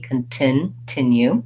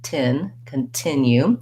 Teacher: it doesn't have a stopped t or flat t like many words with t in the middle that's because the t starts a stressed syllable it's just the same as the t at start of words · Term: real t sound